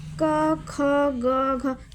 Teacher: कंठ से स्पर्श हो रहा है।